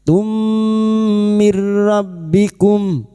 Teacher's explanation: masuk pada huruf mim dan mendengung selama tiga harakat